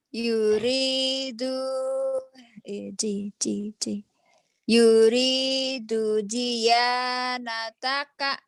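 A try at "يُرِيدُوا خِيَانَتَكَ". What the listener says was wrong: Bukan ji, tapi titiknya kan di atas mah bukan ji.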